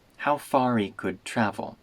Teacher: we make the H in he disappear and we link could travel